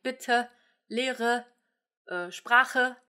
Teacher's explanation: German does this all the time, mostly at the end of words, in two ways. There is the Schwa that most often comes out of a word final e, the sound, like in bitte, Lehre, Sprache, etc.